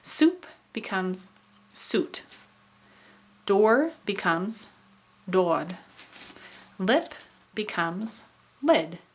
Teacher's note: so then we have alveolar assimilation this is when you have a non alveolar sound changes to an alveolar sound because of another of alveolar in the word so we have